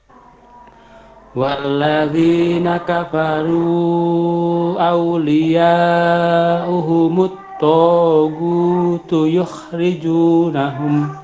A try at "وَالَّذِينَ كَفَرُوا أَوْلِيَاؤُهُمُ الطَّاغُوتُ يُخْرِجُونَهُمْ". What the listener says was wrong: To dan hu-nya tadi kepanjangan dikit, dikurangi.